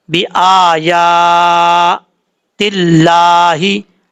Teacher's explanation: بھی کھڑا زبر ہے، یا کے اوپر بھی کھڑا زبر ہے، دونوں کو ایک ایک الف کی مقدار لمبا کر کے پڑھنا ہے